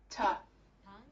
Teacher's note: The tip of the tongue touching the alveolar ridge, it stops the air completely